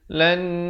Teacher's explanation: Dengungkan dua harakat. Di situ wajib ul-gunnah.